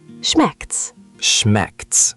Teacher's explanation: That's a great observation. It's actually a short, casual squish of schmeckt es, but Germans just say schmeckt's.